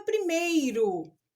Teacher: O E é pronunciado com mais força e o I pronunciado de maneira fraca. Então, aqui também eu tenho um ditongo.